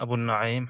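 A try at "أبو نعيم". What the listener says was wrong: Abu Nu'aym, not Abu Na'im.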